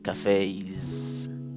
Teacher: Al escuchar bien, escuchamos al final el sonido E, como en la palabra say, que es decir. Así que cuando le agregamos la S, termina como cafés, con sonido de Z.